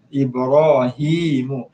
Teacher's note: Jadi maknanya tuan-tuan puan-puan kena baca panjang lah, so sekarang kena baca panjang dua harakat mat asli